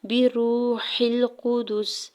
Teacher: بِرُوحِ الْقُدُسِ، با کی زیر کو جلدی سے ادا کرنا ہے، واو ساکن سے پہلے را کے اوپر پیش ہے، واو مدہ ہو رہا ہے ، ہا کی زیر کو لام ساکن کے ساتھ ملاتے ہوئے